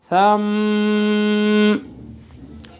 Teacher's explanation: غنہ ہوگا، تشدید بھی ہوگی، جھٹکا محسوس نہیں ہوگا